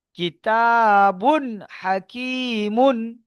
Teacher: তানবিনের আওয়াজকে বিনা গুন্নায় জাহির করে তাড়াতাড়ি পড়তে হবে